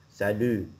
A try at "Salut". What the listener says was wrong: Oui, good job.